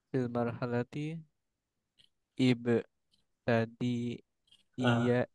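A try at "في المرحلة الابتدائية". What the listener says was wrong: Huruf ta-nya di sini bukan fathah ya. Seharusnya kasrah dia. Ibtidaiyah.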